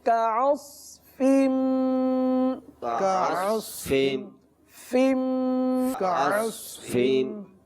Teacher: صاد پر پڑھیں گے, فا باریک پڑھیں گے